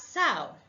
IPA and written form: sɑʊ (sow)